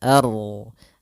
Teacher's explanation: a-nya tipis, ro-nya tebal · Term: ro tafkhim